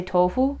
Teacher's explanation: make your F sound kind of quiet, then you sound Japanese